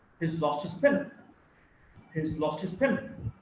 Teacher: So you would hear basically two words, lost and pen. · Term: sentence stress